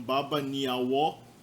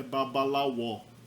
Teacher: Aí a gente tem o verbo ni, que a gente já viu, seguido de vogal ele vira L